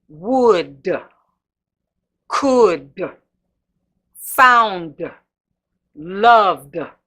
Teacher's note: You hear that it's almost, that D is almost taking on another syllable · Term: punching that D